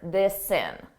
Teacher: I can take that S sound, and I can add it to the beginning of in because it begins in a vowel. This sin. And it sounds like one word, this sin.